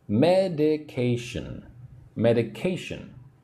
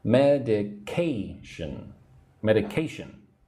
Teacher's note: So again the third syllable one two three that has the emphasis